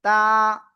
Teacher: জিহ্বার আগা সামনের উপরে দুই দাঁতের গোড়ায় লাগিয়ে আমরা 1 আলিফ টেনে পড়বো